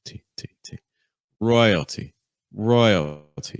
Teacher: The T is going to be super weak, super fast, super low in pitch.